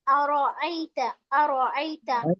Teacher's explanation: रो को मोटा पढ़ेंगे, रो पर जबर है। आरा आईता खींचेंगे नहीं, लेकिन अरअयत आरा अरा आईता।